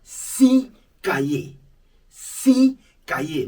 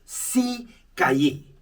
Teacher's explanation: The S is silent when the number is followed by a word beginning with a consonant.